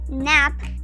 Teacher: la A se pronuncia tal como en español, es un sonido abierto, A. Vamos a ver los ejemplos.